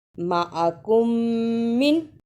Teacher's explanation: میم ساکن کی آواز کو تھوڑی دیر منہ میں چھپا کر غنہ بھی کرنا ہے اور شد کو بھی ادا کرنا ہے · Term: ادغام شفوی